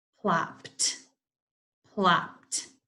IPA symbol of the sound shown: t